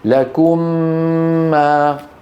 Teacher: ندغم الأولى في الثانية فينشأ ميم مشددة بحاجة إلى غنة طويلة